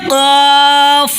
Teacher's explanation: اس کا مخرج ہے زبان کی جڑ اور اوپر کا تالو مل کر قاف ادا ہوتا ہے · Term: بڑی قاف